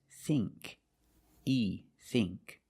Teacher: Thing and think use the long E sound, not the short I.